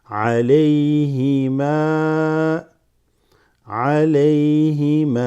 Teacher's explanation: And then the ma is just extended slightly. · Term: med